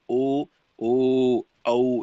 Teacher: ಅಕ್ಷರಗಳನ್ನು ನಾವು ನೋಡುವುದಾದರೆ ಕಂಠೋಷ್ಟ ಅಂದ್ರೆ ಕಂಠ ಕಂಠ ಮತ್ತು ಓಷ್ಟ ಅಂದ್ರೆ ತುಟಿ ಕಂಠ ಮತ್ತು ತುಟಿಯ ಮೂಲಕ ಹುಟ್ಟತಕ್ಕಂತಹ ಅಕ್ಷರಗಳೇ ಕಂಠೋಷ್ಟ